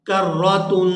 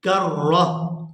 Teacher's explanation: لیکن اگر یہاں ہم ایسے لفظ کے اوپر وقف کرتے ہیں تو پھر یہ جو تا ہے وہ ہا کے اندر کنورٹ ہو جاتی ہے